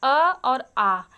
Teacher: इनका उच्चारण हम गले के सबसे निचले भाग से करते हैं यानी कंठ से